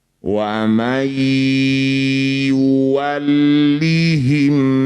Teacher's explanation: Bunyi nun masuk pada ya. Dengungkan dua harakat. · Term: idgham bigunah